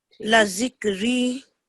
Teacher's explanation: یہ حرف مد ہے، ٹھیک ہے، تو اس کو آپ نے 2 سیکنڈ لمبا کرنا ہے